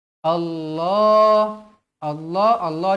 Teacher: Allah ini tebal sebab berbaris atas